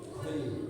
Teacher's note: Ada bunyi hamsnya, ada anginnya sedikit kul. Tapi kalau kof tak boleh ada angin.